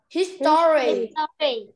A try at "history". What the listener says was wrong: Rồi, thì thực ra cái chữ O nó không cần đọc đâu. Em đọc là history nhá, thì nó đọc nhanh history. History.